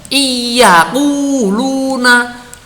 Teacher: nunnya itu diidghamkan, hilang suara nunnya. Yang muncul suaranya iya. Nah, ini namanya nunnya ini diidghamkan atau idgham atau dilebur ke dalam huruf ya.